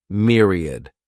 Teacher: The next noun is myriad. This word has 3 syllables, and the stress is on that first syllable. Mere sounds like mere, myriad.